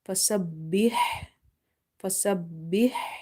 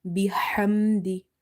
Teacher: try to pronounce the ha from the middle of your throat. And in order to do so, you have to make your mouth wide open and exhale the air out.